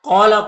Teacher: قاف حروف مستعلیہ میں سے پر پڑھیں گے، یہاں پر الف مدہ ہے۔